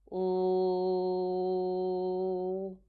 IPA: l